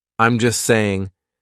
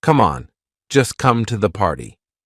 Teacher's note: we drop that t we do not pronounce it so just sounds like just right just an S I'm just